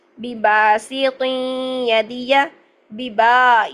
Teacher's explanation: نعیدہ، بباسط یدیہ، ببا، یہاں پر الف مدہ کیا ہم نے، لمبا کرنا ہے 2 حرکات با کو